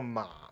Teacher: 我们台湾通常只会念前半段下滑的部分 ，所以也可以写作马。第四声骂就是从最高音滑到最低音骂。我们之前的影片台语连读变调里面介绍过台语的声调，你可以看到它的图后面有像五线谱的线，也是这个五个音高的概念。三、对、口、跨、狼、诶、皮、地。子音的表中还有一区是所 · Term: 三声